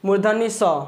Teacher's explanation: अगर मुर्धनी स बोलते हैं तो हमारा जो जीव है ना मुर्धनी स तो कहां पर टच कर रहा है तो मुर्धा यानी दांत के जस्ट ऊपर तो इसका उच्चारण स्थान क्या हो जाएगा तो मुर्धा हो जाएगा